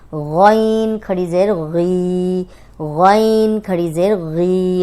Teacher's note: गौइन मोटा भी है, दो हरकत लंबा करेंगे क्योंकि खड़ी ज़ेर है इस पे।